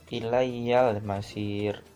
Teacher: Selanjutnya ada alif lam qamariyah, ilayyal masir. Di sini alif lam bertemu dengan salah satu huruf qamariyah yaitu mim, maka alif lam harus dibaca dengan jelas